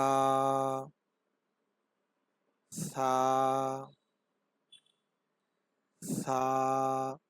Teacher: সা উচ্চারণের সময় জিহ্বার আগা সামনের উপরে দুই দাঁতের আগার সাথে লাগিয়ে দেবেন।